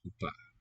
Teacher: O seems to raise to an U.